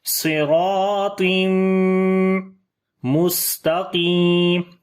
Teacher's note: تنوین کے بعد یہاں پر میم آ گیا, ادغام غنے کے ساتھ کیا جائے گا. ویسے بھی میم کے اوپر شد ہے, غنہ کرتے ہیں.